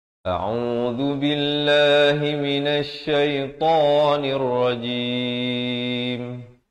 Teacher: Zal di hujung lidah, lafz jalalah dibaca nipis 2 harakat